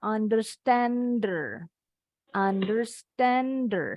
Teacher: kadang-kadang kalau dalam percakapan sehari-hari, penutur asli bahasa Inggris nih H-nya dibuang. Jadi bacanya understander.